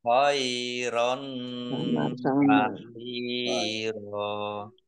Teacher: Fathah tanwin bertemu dengan huruf kaf, bacaan ikhfa dibaca samar-samar.